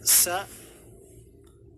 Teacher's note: semua contohnya dibawakan dengan harakat fathahnya Sin dengan harakat fathahnya SA makhrajnya adalah ujung lidah dengan dua gigi seri bawah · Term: huruf Sin